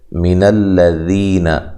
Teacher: لام کو موٹا نہیں کرنا، لمبا نہیں کرنا، ذی یا مدہ ہے، ذال کو نرم ادا کرنا ہے، ذی یا مدہ، ٹھیک ہے، 1 الف کی مقدار کے برابر لمبا کریں گے، نون کو لمبا نہیں کریں گے۔